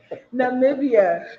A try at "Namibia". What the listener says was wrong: The eye. Check the eye out. It's not silent. Namibia. Namibia.